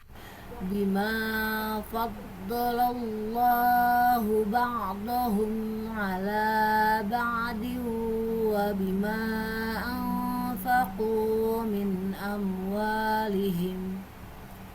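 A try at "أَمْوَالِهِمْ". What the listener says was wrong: Nah, huruf H-nya nggak boleh terlalu jim ya. tidak ba'dhum. Tidak terlalu seperti itu. Bima faddalallahu ba'dhum. Tidak hum. Ini juga amwalihim, tidak amwalihim.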